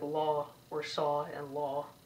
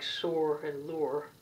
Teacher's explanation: in american english it's just a straight ah sound